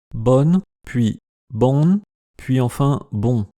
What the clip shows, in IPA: bɔn, puis bɔ̃n, puis enfin bɔ̃